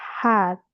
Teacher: It combines plosive and fricative sound.